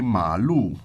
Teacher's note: ma means horse okay so that's the third tone